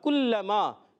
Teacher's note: کاف پر پیش ہے, کاف کو باریک رکھنا ہے, ہونٹوں کی گولائی سے پیش ادا ہوتا ہے. کاف زبان کی جڑ و تعلق کا سخت حصہ کاف ادا ہوگا.